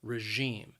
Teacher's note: the word has two syllables and the stress is on that second syllable